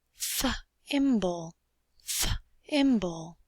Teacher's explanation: You feel no vibration in the TH